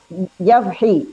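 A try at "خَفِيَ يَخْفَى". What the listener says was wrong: Bukan, tertukar lagi. Tertukar hurufnya.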